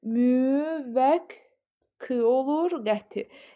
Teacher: Müvəqqəti sözünün tərəffüz forması müvəq olur. Qəti yəni iki qdan biri k şəklində tələffüz olunur